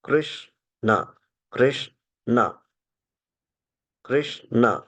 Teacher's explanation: कृष्ण बोलते समय जो अग्र भाग है वो ऊपर स्पर्श होना चाहिए।